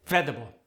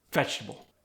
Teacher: you might eliminate some of the extra syllables to make it easier